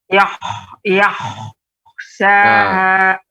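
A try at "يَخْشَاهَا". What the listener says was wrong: Untuk kha, sifat pengucapan kha itu memang adanya kalau dalam bahasa Arabnya hikkah atau garukan namanya. Nah, seperti itu. Ya, ada sedikit ya, namun belum terlalu banyak ya, jadi lebih ditambah lagi terus nanti dilatih, Ibu. Nah, seperti itu.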